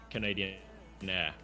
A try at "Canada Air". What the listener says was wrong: Canada Air? you might have said Canadian Air, which is wrong. It's Canada Air.